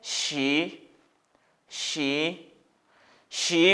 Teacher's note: it has second tone the ascending tone